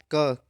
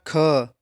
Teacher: जो मुख से निकलने वाली जो श्वास की मात्रा होती है वो कम रहती है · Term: अल्पप्राण